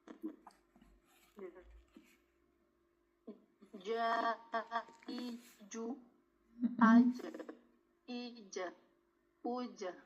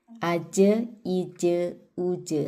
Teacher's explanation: tidak ada hembusan nafas Ya, tidak didorong, tidak mendorong dari tenggorokan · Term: huruf jim